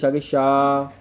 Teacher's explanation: श का उच्चारण जीभ के पिछले भाग और तालु के स्पर्श से होता है। इसीलिए इसको तलव्य वर्ड कहते हैं। · तालू से आवाज निकलती है शा की